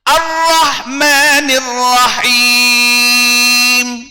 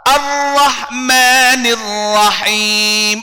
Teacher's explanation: Ra ni kalau kita baca dengan asyiddah, dia tak akan bergetar. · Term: tak bergetar